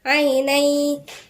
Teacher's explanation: هنا عيني تنوين وبعدين ياء، ده اسمه إدغام ناقص بغنة